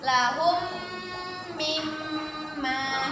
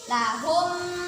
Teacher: kita baca berdengung dua harokat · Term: idgham mimi